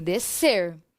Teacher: quase que não aparece o som da letra s parece que tem só a letra c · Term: dígrafo